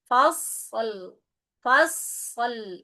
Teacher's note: fasl huruf shad bukan qalqalah, maka disempurnakan dulu dengan mengalirkan suaranya. Fas baru lam.